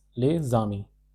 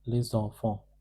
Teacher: we link the consonant of the first word with the vowel of the next word, and the sound is produced because of this rule of liaison as Z.